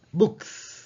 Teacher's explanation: அப்போ அந்த இக் வந்து வாய்ஸ்லெஸ் கான்சனன்ட். எனவே நாங்கள் இப்போ புக்ஸ் வந்து எஸ் சத்தம் தான் கடைசிக்கு கொடுக்கணும்.